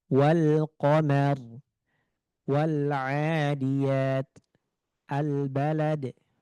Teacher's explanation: alif lam qamariyah tadi lamnya dibaca jelas, dia nampak dan juga dibaca.